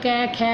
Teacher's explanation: देखो आप कंठ से आवाज़ आ रही है ये सारी, तो ये कंठ से बोले जाते हैं